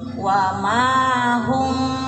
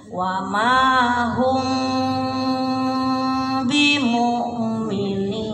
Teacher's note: jadi ifa syafawi bibirnya enggak terlalu rapat ya.